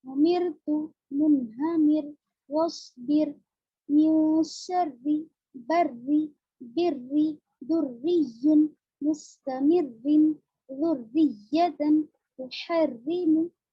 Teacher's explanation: यानी पूरी मिसालों में जेर है, सब में रा बारीक होगा।